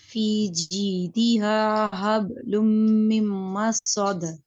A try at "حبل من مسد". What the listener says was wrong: غنے میں تھوڑی دیر اس کو ٹھہر کے پڑھنا ہے دونوں کو، حبل من مسد،